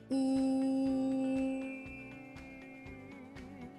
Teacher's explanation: What you can do is say e as in c, then round your lips as if you were trying to say ooh, but still keep the e sound